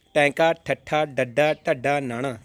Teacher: ਜਦੋਂ ਇਹਨਾਂ ਦਾ ਉਚਾਰਨ ਕਰਦੇ ਹਾਂ ਆਪਾਂ ਤਾਂ ਆਪਣੀ ਜੀਭ ਉਲਟ ਕੇ ਤਾਲੂਏ ਨਾਲ ਲੱਗਦੀ ਹੈ, ਇਸ ਕਰਕੇ ਇਹ ਉਲਟ ਜੀਬੀ ਵਿਅੰਜਨ ਧੁਨੀਆਂ ਨੇ।